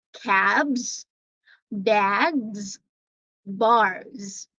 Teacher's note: I'm not pronouncing the letter S there as S, but it's Z